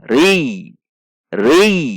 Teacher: Rul, ba, ba 1 ketuk. Ri, ro kasroh masuk ke ya tasydid, maka harus ada tekanan